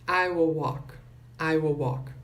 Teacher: Esse L não é pronunciado